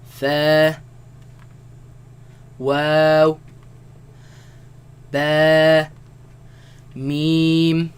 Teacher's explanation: their makharaj their home and that is they all come from the lips